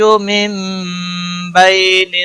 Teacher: نون ساکن کے بعد با آیا ہے، اس لیے یہاں پر قلب ہوگا، گناہ کے ساتھ پڑھیں گے، اخفاء شفوی ہوگا۔